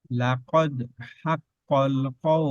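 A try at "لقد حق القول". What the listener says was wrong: লাকাদ, এই দালে কলকলা দেখেন লাকাদ লাকাদ, এখানে যদি বলি লাকাদ হাক্কাল তখন আমার সিফাত নষ্ট হয়ে যাবে। লাকাদ হাক্কাল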